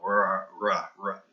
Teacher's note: And with L, the way I treat, you know, how I teach to pronounce the word, the letter R, you know, the R, is I teach them to say wa, and then do the guttural sound, the R, in the throat, and then kind of merge the two